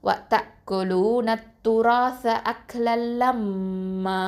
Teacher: அடுத்தது மீமில் மேலே என்ன இருக்குதுன்னு பார்த்தீங்கன்னா ஃபத்ஹத்தைன் வந்துருக்குது. அப்போது ஃபத்ஹத்தைன் இருந்துச்சுன்னா நம்ம நிறுத்தும் போது 2 ஹரக்கத்தை நீட்டி தான் நிப்பாட்டுவோம் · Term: மத்தல் ஐவத்